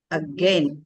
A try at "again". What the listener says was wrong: That R should be weak. You should be weakened.